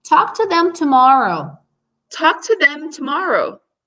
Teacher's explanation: I have to hear that M closing and the T coming right after.